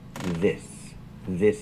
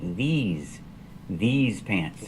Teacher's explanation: I use a long e like green beans plus the Z sound